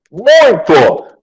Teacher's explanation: Saiu pelas fossas nasais, então, muito, tá? É nasal. Tá? É um ditongo nasal.